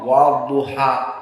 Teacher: alif lam ditulis tanpa dibaca, langsung dari waw kepada dha, wadduha. Dan duha di sini hukumnya mad at-tabi'i, 2 harakat, wadduha. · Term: alif lam asy-syamsiyah